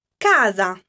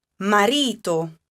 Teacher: So the accent in this case is on the second to last syllable, which will be the syllable ca. Casa. Similarly, you would have it in the word marito.